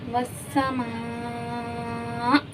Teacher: جھٹکا آیا کیونکہ لاسٹ میں حمزہ ساکن ہو گیا. ٹھیک ہے جی، لاسٹ میں حمزہ ساکن ہو گیا تو اس وجہ سے ہم نے یہاں جھٹکا دیا ہے.